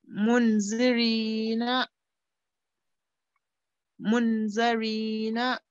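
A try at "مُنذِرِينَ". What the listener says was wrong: But over here, you missed one thing. This is an ikhfa. Right, so you have to make a nasal sound for 2 seconds. Partial nasal sound for 2 seconds.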